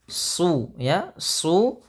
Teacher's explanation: Isti'la ada terangkatnya lidah kita, pangkal lidah, ya, dengan tebal.